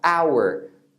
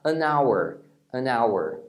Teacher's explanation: Esse H não tem som, o primeiro som é de uma vogal.